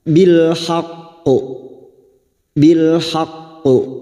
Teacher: huruf q yang bertasdid maka ini yang disebut dengan qalqala Kubro qalqala yang kuat cara membacanya masuk dulu pada huruf qof baru dipantulkan · cara membacanya masuk dulu pada huruf qof baru dipantulkan bilhaqqo bilhaqqo pada saat memantulkan kita tebalkan bunyi qof karena huruf qof huruf istilla